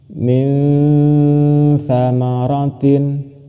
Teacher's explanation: Nun mati bertemu dengan tha, sama cara membacanya seperti yang ini tadi. Cara membacanya harus samar dan berdengung. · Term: ikhfa